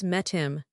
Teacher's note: If I delete the H, it becomes metim. But wait, Met ends in a T and I am starts with a vowel. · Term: H deletion